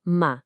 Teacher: é um mergulho total. O som vai lá do médio pro grave e depois sobe de novo. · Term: terceiro tom